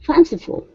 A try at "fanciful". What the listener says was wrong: There you go. Good, good.